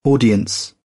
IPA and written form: ˈɔː.di.əns (Audience)